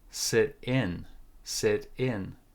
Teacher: we put more stress on the second syllable on the preposition